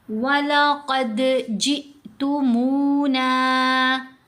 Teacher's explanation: قاف کو موٹا پڑھنا ہے، دال کے اوپر یہاں ہم نے قلقلہ کرنا ہے۔ یہاں قاف کے اوپر بھی قلقلہ کیا جائے گا، دال کے اوپر بھی قلقلہ ہوگا۔